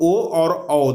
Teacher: ओ और औ का उच्चारण स्थान कंठोष्ठ होता है